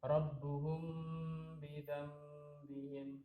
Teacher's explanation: Jadi cara membacanya adalah ditahan dua harokat atau disamarkan. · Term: ikhfa syafawi